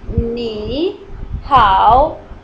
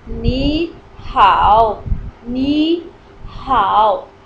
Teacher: So wherever two tones, curved tones are together, you must convert it, the first tone in rising tone and the other one in curved tone.